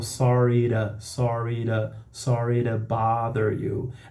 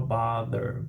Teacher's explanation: E aí vocês estão vendo que o meu to, desculpe te incomodar, o to ali é a preposição, ela é reduzida, curta, ela é uma function word, e pelo fato de ela estar entre o som de duas vogais, eu falo sorry to bother you.